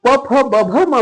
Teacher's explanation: जेव्हा आपण प फ ब भ म बोलतो तेव्हा ओठ एकामेकाला चिटकले जाते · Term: ओष्ठ